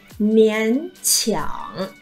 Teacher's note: Hai thanh 3 đúng không, biến điệu này